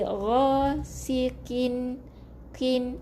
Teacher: Qaf yang kita sebut adalah huruf yang tebal, tapi bila berbaris bawah ketebalannya dinipiskan sikit. Tak boleh baca qin.